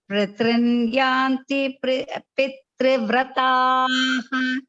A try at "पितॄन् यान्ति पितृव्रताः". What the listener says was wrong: அந்த எக்ஸ்ட்ரா இத்து கிடையாது. நம்ம எப்படி சொல்லுவோம், பித்ரு காரியம், பித்ரு காரியம் சொல்ல மாட்டோம் இல்லையா? பித்ரு பி இத்ரு தான். சோ பி இத்ரு சொல்லும்போது பித்ருன் யாந்தி பித்ரு விரதாக, பித்ரு விரதாக கிடையாது.